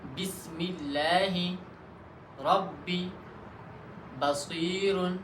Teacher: با دونوں ہونٹوں کے تر حصے سے ادا ہوتا ہے، یعنی جب دونوں ہونٹوں کی تر حصہ ایک دوسرے کے ساتھ مل جائے تو وہاں سے با ادا ہوتا ہے۔ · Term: حرف با کا مخرج